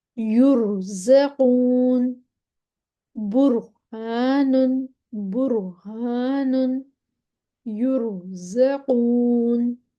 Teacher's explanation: اب را ساکن ماں قبل پیش، را ساکن سے پہلے پیش آ گئی پھر بھی موٹا پڑھ دینا ہے